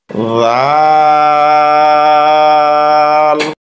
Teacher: নরম হবে, জিহ্বার আগা উপরের দাঁতের আগায় লাগবে।